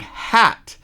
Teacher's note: Now say the word hat, you'll notice that it's open in the back and the sides.